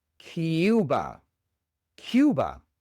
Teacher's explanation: La única diferencia es que estamos pronunciando la u con una i antes. En lugar de u esu.